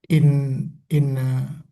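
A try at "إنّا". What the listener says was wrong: Hmm, betul, tapi panjang ya. Inna, nah ini udah sungguhnya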